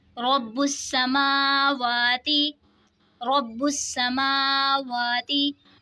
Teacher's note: रा पे ज़बर है, रा को मोटा पढ़ेंगे। बा में कलकला होगा, तशदीद वाले हर्फ को जमाओं के साथ पढ़ेंगे।